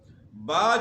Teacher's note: با جو ہے اس کا مخرج دونوں ہونٹ جو ہے تری والے حصے سے ملیں گے تو با ادا ہوگی